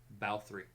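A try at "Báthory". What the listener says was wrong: It's the wrong emphasis. A wrong syllable.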